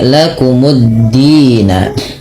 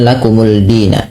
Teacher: Sehingga idghamnya kemana? Ke dal, dimasukkan ke dal, lamnya tidak ada lagi sehingga dalnya tasydid. Maka menjadi lakumuddina. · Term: idgam syamsiyah, idgham syamsiyah